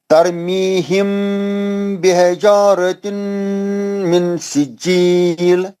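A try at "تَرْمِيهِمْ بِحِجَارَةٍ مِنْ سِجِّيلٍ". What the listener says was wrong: نہیں من سجیل نون ساکن کا اخفا حرف سین ہے وہ چھوٹ جا رہا. پھر پڑھیے دوبارہ.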